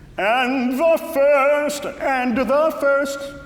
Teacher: you don't always have to pronounce the final d